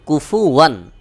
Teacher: স্পষ্ট যেভাবে আছে সেভাবেই পড়তে হবে অর্থাৎ ইজহার অর্থ স্পষ্ট পড়া যেভাবে আছে ঠিক সেভাবে পড়া কোন গুন্না ছাড়া যেভাবে আছে স্পষ্ট করে সেভাবেই উচ্চারণ করা